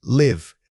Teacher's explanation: When you say live as in residing somewhere, keep the vowel sound small and slightly clipped.